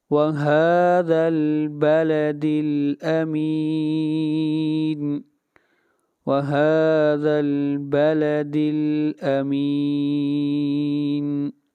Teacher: امین پر مد عارض وقفی ہے، اس کو 3 الف کے برابر کھینچ کر پڑھیں گے